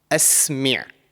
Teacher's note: it's one of the throat letters and it should come from the middle part of your throat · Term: Ain